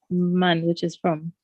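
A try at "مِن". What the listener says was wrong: Min. Not man.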